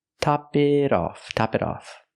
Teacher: the t is between vows the T changes to a fast D